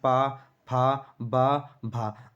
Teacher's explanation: ओठों से स्पर्श करते हुए हमारी जो है हवा निकलेगी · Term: प वर्ग